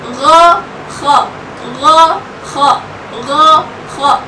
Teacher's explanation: Jadi gha sama kha ini seperti ada nafas yang mengalir di dalam.